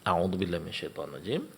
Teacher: hanya ada satu macam mad yaitu mad yang dipanjangkan dua harakat